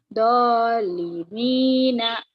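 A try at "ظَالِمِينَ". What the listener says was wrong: Zo-nya agak rapuh dikit. Zo, bukan do. Zo. Zolimina.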